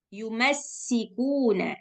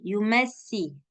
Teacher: Kalau kita nggak buat suara sofir, maka kedengarannya dia akan lemah. Kayak Yumesi.